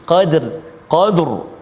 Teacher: sebelum huruf ra itu ada huruf yang berbaris Fathah di atas jadi kita ditebalkan ataupun tafkhim